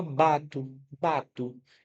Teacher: Esse O é um som que vem mais fraco na pronúncia, por isso eu coloquei como U aqui, né?